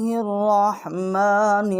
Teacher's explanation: ہا جو ہے را کے ساتھ ہم اس کو ہا کو مشدد کریں گے، اور را جو ہے اس کو ہم منہ پر کر کے پڑھیں گے، موٹا کر کے پڑھیں گے